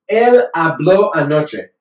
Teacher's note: If I say hablo with the emphasis on that O, él habló anoche.